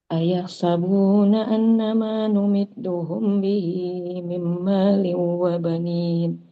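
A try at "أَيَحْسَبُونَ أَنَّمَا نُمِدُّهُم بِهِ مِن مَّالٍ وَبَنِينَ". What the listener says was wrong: Sebentar, pelan-pelan bacanya. Yang an ini didengungkan. Jadi agak lama ditahannya. Ayah sabuna an agak lama ditahan. Terus nih juga dengung.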